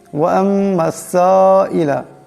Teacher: সিনের উপর মদ আছে, এটাকে অবশ্যই লম্বা করে পড়তে হবে